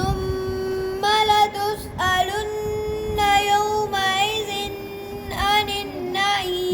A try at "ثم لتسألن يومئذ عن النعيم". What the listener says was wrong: यौमइज़ पे गुना नहीं आनिन पे है जी